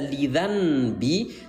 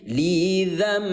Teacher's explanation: suara N kita ganti menjadi suara M. Maka di sini ada keterangan baca M yang tadi dibaca lidi, sekarang berubah menjadi lidambi gitu ya.